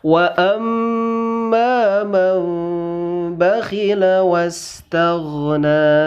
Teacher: karena ini terhukum dengan hukum iklab, maka man di sana man harus diganti dengan huruf mim